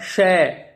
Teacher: पहला श है, ये तालु से बोला जाता है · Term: तालव्य श